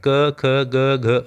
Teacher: ये कंठ से बोले जाते हैं